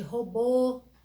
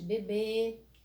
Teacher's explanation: o acento circunflexo ele me dá um som fechado das vogais